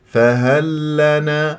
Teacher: عندك لام مع اللام ادغام متماثلين فراح يصير عندك لام مشدده